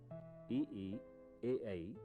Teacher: ई ई, ए ऐ जिह्वा के अगले भाग या अग्र भाग से उच्चरित होते हैं।